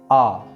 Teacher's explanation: विवृत स्वर जिसके अंदर मुख पूर्ण रूप से खुला हुआ होता है। इसमें आने वाला स्वर है आ।